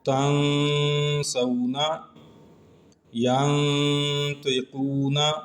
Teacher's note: ان دونوں مثالوں میں نون ساکن اور آگے سین اور طا جو حروف اخفا میں سے ہیں ایک ہی کلمے کے اندر جمع ہیں، تو یہاں پہ بھی ہم نے اخفا کیا ہے۔